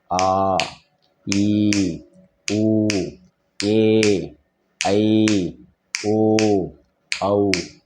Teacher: நெடில் எழுத்துக்களை எப்படி ஒழிக்கணும்னா ஆ ஈ உ ஏ ஐ ஓ அவ் இரண்டு மாத்திரை அளவு இரண்டு நொடிகள்